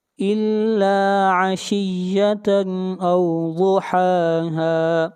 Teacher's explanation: ضاد کو موٹا پڑھیں گے، ضاد حروف مستعلیہ میں سے ہے